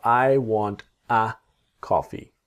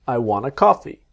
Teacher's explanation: This want a is wanna.